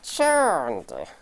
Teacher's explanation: Charmed! Non, charm, le M vibre, donc on va rajouter simplement le son D